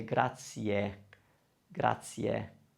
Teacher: the e can be softened a little bit because it's followed by another vowel